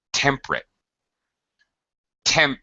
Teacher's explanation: temperate we even reduce it to uh we reduce the syllable in modern day English we would say temperate temp first syllable stress